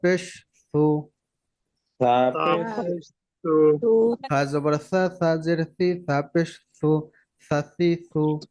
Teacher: জিহ্বারও আগা আর সামনের উপরের দুই দাঁতেরও আগা, আগা। মাথা, এই দুইও মাথা একসাথে হালকা করে লাগে, যেন আওয়াজটা একদম নরম হয়। হালকা করে লাগবে, আওয়াজটা নরম হবে।